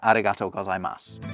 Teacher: I didn't pronounce that U that you can see at the end. And that's because you don't.